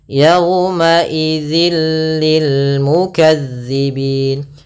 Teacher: Lil mukadzibin ini ada namanya idgham bhunah Maaf idgham bila ghunah yaitu idgham yang kita baca tanpa disertai dengan ghunah maka cara membacanya yaitu suara tanwinnya masuk ke huruf lam dan · suara tanwinnya masuk ke huruf lam dan nunnya, suara nunnya hilang. Awalnya yauma idzin, ketemu lam langsung ke lam, jadi mengganti l. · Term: idgham bila gunnah